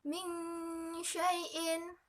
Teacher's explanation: Ada nun mati bertemu dengan huruf shin. Maka cara membacanya samar-samar. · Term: ikhfa